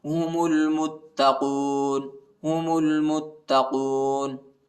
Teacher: मीम को ता के साथ मिलाएंगे, ता पर शद आए, ता को शिद्दत के साथ, सख्ती के साथ पढ़ेंगे